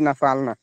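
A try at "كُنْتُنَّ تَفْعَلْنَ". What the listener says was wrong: না ফাল না, না, এটা তা ফাল না হবে।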